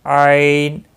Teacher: عین وسط حلق یعنی گلے کے درمیانی گلے سے نکلتا ادا ہوتا ہے